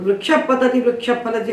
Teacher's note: आप देखिए कि विसर्ग कंठ में आपको नहीं सुनाई पड़ रहा है, कंठ में नहीं पैदा हो रहा है, उसकी उपलब्धि ओष्ठ में हो रही है। तो पाफा के पहले जो विसर्ग है वो उपधमानी बनता है, और उसका उच्चारण स्थान ओष्ठ होते हैं, दोनों ओष्ठ